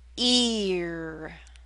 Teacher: r [Music] e make the first vowel sound longer [Music] e now Glide from E into R you Glide with a bit of a y sound